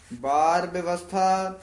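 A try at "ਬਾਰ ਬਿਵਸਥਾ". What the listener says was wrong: ਬਾਰ ਵਿਵਸਥਾ ਉਚਾਰਨ ਕਰਨਾ ਹੈ, ਬੱਬੇ ਤੋਂ ਚੱਕ ਕੇ। ਬੱਬੇ ਦੋਵੇਂ ਨਹੀਂ ਬੋਲਦੇ ਨੇ, ਵਿਵਸਥਾ ਨਹੀਂ ਕਹਿਣਾ, ਇਹ ਵਿੱਚ ਵਾਵਾ ਵੀ ਹੈਗਾ। ਵਿਵਸਥਾ, ਬਾਰ ਵਿਵਸਥਾ ਤੁਝਹਿ ਪਿਆਰਾ ਦੂਧ।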